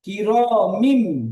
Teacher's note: তানবিনের পরে যদি বা আসে তাহলে সেই তানবিনটাকে মিমের দ্বারা পরিবর্তন করে পড়তে হয়